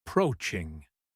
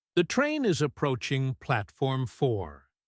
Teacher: In a fast announcement, the middle syllable gets stressed, and the start and end disappear.